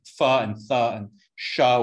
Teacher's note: fricatives are things like fu and tha and show which make turbulent noise while you speak